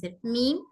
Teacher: मीम पर हवा smoothly निकलती है बिना किसी प्रेशर की